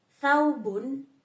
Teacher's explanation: Interdental ini adalah bunyi yang dihasilkan dengan menempatkan ujung lidah di antara gigi atas dan bawah.